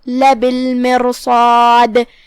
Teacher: کلمت لبالمرصاد جو کہ را پہ جزم ہے تو یہاں را کا حکم ہے تفخیم کیونکہ اس کے بعد حرف الصاد ہے، صاد حروف تفخیم میں سے ہے تو ہم را کو اور صاد کو دونوں بھاری آواز میں ادا کریں گے. آخری میں حرف الدال پہ ہم رکیں گے تو اسے ہلاتے ہوئے یہ کلمہ کو ادا کریں گے، لبالمرصاد ان ربک لبالمرصاد. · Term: قلقلہ